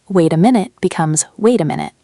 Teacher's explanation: with that t softening into a quick d sound. This is called flapping. Very common in American English especially.